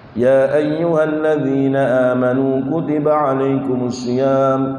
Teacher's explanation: Kita sering kadang-kadang kita tiru-tiru di imam-imam di haram itu baca mad jaiz dengan 2 harokat